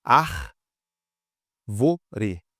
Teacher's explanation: Três sílabas. E realmente o ár aqui que é mais forte, então é uma proparoxítona.